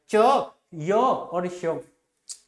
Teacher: जिनका उच्चारण ता जब जीवा तालु से स्पर्श करेगी उनको तालव्य व्यंजन कहा जाता है